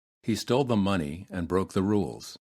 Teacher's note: make sure that you add an extra uh sound before the letter letter L